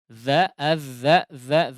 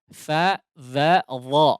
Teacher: huruf dzal ujung lidahnya ada yang keluar sedikit ya. Za, jangan pelit ya, jangan disumputkan, jangan disumpetin, apa, jangan jangan diumpetin ya, jangan disembunyikan si lidahnya di dalam, tapi keluarkan sedikit.